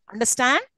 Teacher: this and it is also rising up if you've noticed understand yes I'm insisting on the last syllable